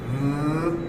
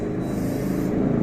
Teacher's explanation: The first sound is voiced, which means we use our vocal cords, and the second is unvoiced, which means we don't use our vocal cords.